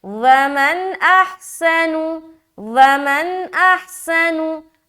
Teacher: ہا کو بالکل سینے کی طرف سے نکالے، سین میں سیٹی کی آواز ظاہر کرے، نون کو پیش کی حرکت کے ساتھ جل پڑے۔